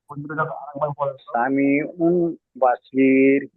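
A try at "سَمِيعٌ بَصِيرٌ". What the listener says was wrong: উমটা গুন্না করতে হবে, উম, সামিউম।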